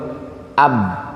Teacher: suara ab itu nggak ada angin pasti, karena mulutnya tertutup, atau bahasa tajwidnya adalah jahor.